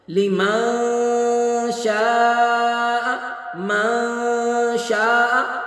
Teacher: نون کی آواز کو ناک میں گم کریں گے، چھپا دیں گے۔ اخفا کا معنی ہی مخفی کرنا ہے، چھپانا، یعنی نون کی آواز کو ناک میں چھپانا ہے، زبان کو اوپر تالو کے ساتھ لگا کے نون کو ادا نہیں کرنا۔